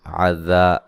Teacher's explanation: ذال کو نرم، الف مدہ ہے، ٹھیک ہے، یہ مد اصلی ہے۔